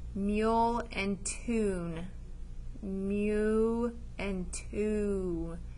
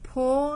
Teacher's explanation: and two so they both have the long vowel music mule so that has a long vowel where it says its name